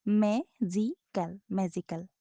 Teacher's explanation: the word magical is pronounced with more force on the first syllable, i.e. we say the first syllable more strongly than the others.